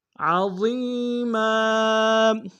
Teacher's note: ضا کو یا کے سامنے آئیں گے، یا مدہ ایک دار میں کھینچیں گے، میم کے اوپر تنوین ہے، غنہ کریں گے